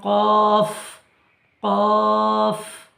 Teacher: জিভের গোড়া উপরের তালুর সাথে লাগিয়ে উচ্চারিত হয়